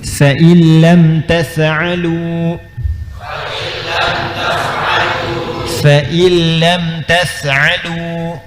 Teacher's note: bukan in tapi idgham bila gunnah. Gunnah dengungnya nggak ada. In ketemu dengan lam, ya, hurufnya cuma ada dua, lam dengan ra.